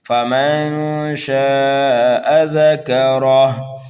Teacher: ذکرہ، ذال کو، کاف کو، را کو جلدی پڑھنا ہے اس لیے کہ متحرک ہے، را کے اوپر زبر ہے اس لیے را کو پر پڑھیں گے، ہا کے اوپر الٹا پیش ہے، جب یہاں پر ہم وقف کریں گے تو اس الٹے پیش کو ہٹا کر یہاں پر جزم لگا دیں گے، یعنی ہا کو ساکن کر دیں گے، اس کو بولیں گے وقف بالاسکان۔